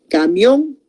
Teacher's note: El mayor golpe de voz está en la O. Camión. Entonces, ahí no se va a partir porque el acento está recayendo en la vocal fuerte.